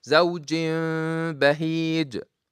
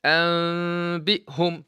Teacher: Remind you that this tanween or noon sakina will be replaced by the meme. Then you hide the meme and do the sound from the nose, which is ghunna. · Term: iqlab